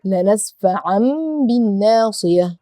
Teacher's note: I produced sound of meme and made ghunna. Why? Because here I have the tanween after it ba.